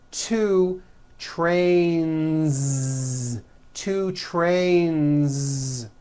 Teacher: two trains with a voiced Z ending